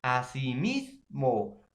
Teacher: lleva la mayor fuerza de voz en la penúltima sílaba